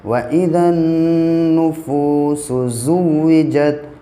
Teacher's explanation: वाव साकिन से पहले फ़ा के ऊपर पेश है, इसलिए वाव मद्दा होगा और इसको फ़ा को थोड़ा खींच के पढ़ेंगे